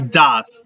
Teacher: No hay O, no hay E y tampoco hay S en la pronunciación. Hay un sonido que es el siguiente. Se llama schwa. La E no suena y la S es una Z.